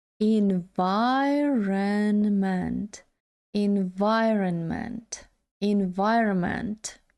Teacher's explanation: наголос на другому складі